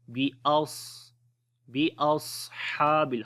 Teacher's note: स्वाद को मोटा पढ़ेंगे, हुरूफ इस्तिअला की वजह से मोटा पढ़ते हैं और यहाँ पर सिफ्त हम्स भी रहेगी, सिफ्त सफ़ीर भी होगी, यानी कि सांस भी जारी होगा और उसके अलावा सीटी की भी आवाज़ आएगी